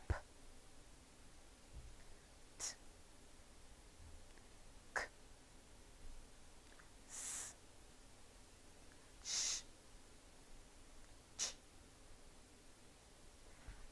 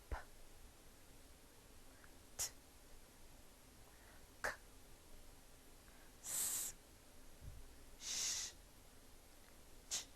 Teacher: You will feel no vibrations at your throat. Instead, just a short explosion of air as you pronounce these sounds. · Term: voiceless sounds